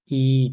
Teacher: तो समृद्ध में देखिए ट्रिक है सुई। सुई लगते ही मुंह बंद हो जाता है, यानी एकदम ना के बराबर खुला रहता है थोड़ा सा